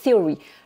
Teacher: Et là, theory, vous voyez, j'ai pas dit théorie, hein, j'ai dit theory. Le TH, donc, ça m'entraîne à mettre la langue sur les dents supérieures.